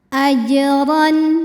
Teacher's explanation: huruf ro dibunyikan secara tafkhim · Maka cara membacanya dipantulkan jimnya dengan pantulan yang kecil dan tetap dialirkan. Ajran. Huruf ra dibunyikan secara tafkhim karena ra-nya ini barisnya di atas yaitu fathah tanwin. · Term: qalqalah sughra